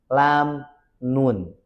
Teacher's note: Ujung lidah menggeser sedikit ke dalam dari makhrajnya lam.